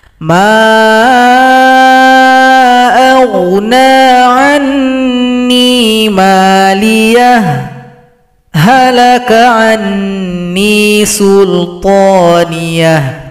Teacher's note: kita berhenti sejenak pada ayat 28 tapi tahan nafas. Tahan nafasnya kira-kira 2 ketukan, langsung sambung berikutnya dengan ayat 29.